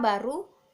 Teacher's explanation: bunyi B itu hidup, oral, bilabial, plosif